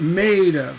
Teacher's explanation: That stress is on made, and of is an unstressed syllable. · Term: feminine ending